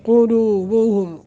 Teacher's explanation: قلوبہم قاف کو موٹا اور قاف کے اوپر ضمہ ہے